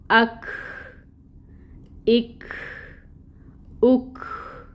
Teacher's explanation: جب کاف ساکن ہوگا تو اس میں اس کی صفت ہے کہ وہ ہمس پائی جاتی ہے. اب ہم نے حمزہ کو متحرک کر دیا اور کاف ساکن ہے.